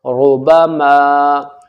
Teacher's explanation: را کے اوپر پیش ہے تو تب بھی را موٹی پڑھی جائے گی